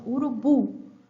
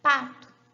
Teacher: quase não produzimos o U, é uma vogal frouxa. São vogais produzidas com menor esforço muscular e prototipicamente ocorrem em sílabas pós-tônicas.